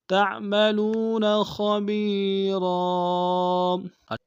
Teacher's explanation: كَانَ بِمَا تَعْمَلُونَ خَبِيرًا، تعملون میں واو مدہ کے اختتام میں کھینچیں گے، خبیر میں یا مدہ کے اختتام میں کھینچیں گے، را کو تنوین غنہ کریں گے، وقف میں تنوین کو الف سے بدلیں گے